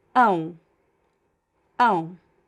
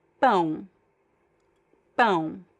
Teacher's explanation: The O in Portuguese, the O becomes a weak U sound at the end of words when they are unstressed